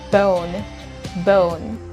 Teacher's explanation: When you're producing the long sound of the letter O, then you are kind of inserting, you have to imagine that there is the letter W after the letter O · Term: long sound of the vowel O